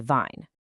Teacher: German speakers might pronounce the W as a V, turning wine into vine.